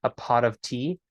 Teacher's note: but you say it relatively quickly a pot of tea the the T in pot turns into a Gujarati r